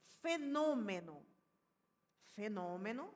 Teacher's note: Fenômeno, a gente tem a antepenúltima sílaba tônica, portanto, deve ser acentuada, obrigatoriamente, porque essa é a regra das palavras proparoxítonas.